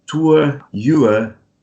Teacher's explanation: In British English, at least, you're not going to pronounce the R. So you're going to, let's say, replace it with a schwa, with this very relaxed sound.